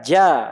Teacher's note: tengah lidah ketemu langit-langit atas rapat rapat menempel. Ya, kemudian dilepaskan ja ya. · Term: jim